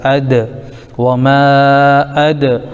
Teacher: یہ دال حروف قلقلہ میں سے بھی ہے، اس کی آواز لوٹ کر آئے گی